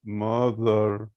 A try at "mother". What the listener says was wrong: It's not mother because it's the sound. The sound you put your tongue between your upper and lower teeth.